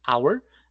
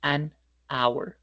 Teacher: la H no suena, suena como una vocal